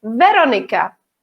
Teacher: Slovakia too uh we have the same name obviously okay but we don't have the stress on the second syllable we have the stress of the first syllables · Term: stress on the first syllable